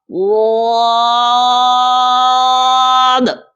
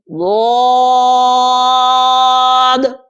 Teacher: زبان کا بغلی کنارہ، یہ سائیڈ جو ہوتی ہیں زبان کی، ادھر سے یا ادھر، دائیں سے یا بائیں سے، اور یہ لگے گی اوپر والی داڑھوں کی جڑوں کے ساتھ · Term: واد کا مخرج